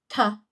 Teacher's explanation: So a T is a stopped alveolar sound, t, because your tongue is right there.